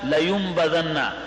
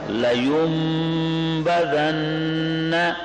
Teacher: نون ساکن کے بعد جب با آ جائے تو نون کا اقلاب ہو جاتا ہے، تبدیل ہو جاتا ہے میم کے ساتھ، تو یہاں پر بھی میم پڑھیں گے، نون نہیں پڑھیں گے۔